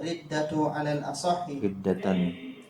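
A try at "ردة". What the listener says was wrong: tanwin riddatan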